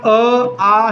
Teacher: आपल्या म्हणजे पडजिभेला लागणार नाही, पण पडजिभेकडे जाईल ना. मग आपल्या जिभेचा मागचा भाग वर उचलून पडजिभेला स्पर्श करताना ज्या वर्णांचा उच्चार होतो त्यांना कंठ्य वर्ण असे म्हणतात.